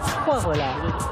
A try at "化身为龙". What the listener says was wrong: 不 是 回 来 回 楼 回 楼